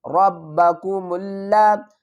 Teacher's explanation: لام کے اوپر سختی کریں گے تشدید کی وجہ سے